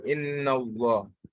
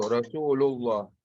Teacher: the letter Lam of Allah is pronounced heavily and with a full mouth when the last letter of the word prior to Allah has a fatha or a dhamma.